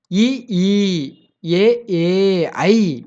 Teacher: இது எப்புட்ன்னா, வாய திறக்கணும். வாய திறக்கிறதோட நம்ம நாக்கோட அடி மேல்வாய் பல்லை பொருந்தும்